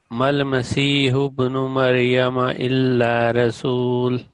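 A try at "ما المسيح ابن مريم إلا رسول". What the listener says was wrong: Ha should be more stress. Mal Masihu ibnu Maryama.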